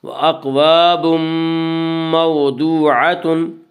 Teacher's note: وَأَقْوَابٌ مَوْضُوعَةٌ واولین وہ والی ساکن ہو، اس سے پہلے زبر ہو، واولین کو نرم آواز کے ساتھ پڑھیں گے · یہاں تنوین کے بعد یومنو کے 4 حرف میں سے میم ہے، اس لیے یہاں پہ ادغام بالغنہ ہوگا